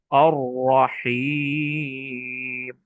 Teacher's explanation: র, আর এটাকে যদি পুর করি তাহলে একটু মোটা হবে, কিন্তু কম্পিত হয়ে হবে আর রহিম। র হরফে কাপন হয়, তবে একবারই উচ্চারণ করতে হয়। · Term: তাকরীরের